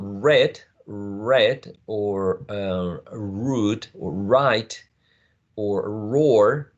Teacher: when we say the words in English, we have to curl the tongue back